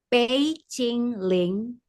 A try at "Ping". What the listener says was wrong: Ping, bukan pay. Ping, ping.